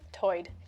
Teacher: One interesting feature is that lumby English speakers share vowel sounds present in the Outer Banks accent where tide is pronounced toid